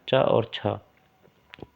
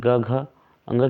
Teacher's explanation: प्रत्येक वर्ग का पहला और दूसरा जो अक्षर होता है वो अघोष में गिनती होती है उसकी, वो घोष नहीं होता। अर्थात च और छ, छ क्या है, अघोष है।